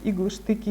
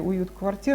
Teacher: К примеру, в третьей строфе четные стихи «иглы, штыки» и «уют квартир» представляются ритмическими перевертышами. Иглы, штыки — это ударный, безударный, ударный, безударный. Две стопы хорея, уют квартир, наоборот, две стопы ямба. Это такое ритмическое зеркало внутри строфы.